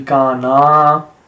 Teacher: So one of them was kana, so it should be kana, because the ka has to be prolonged, the na has to be prolonged